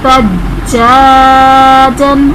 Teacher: جیم حرف قلقلہ مشدد ہے، یہاں پر قلقلہ خوب جماؤ کے ساتھ کریں گے